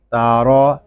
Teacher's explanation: تا بریک اور را کو پر پڑھیں گے۔ را کو پر اس لیے پڑھیں گے کہ را کے اوپر زبر ہے۔